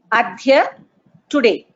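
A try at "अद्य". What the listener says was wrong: There is no Mahaprana there. It is just Adhya.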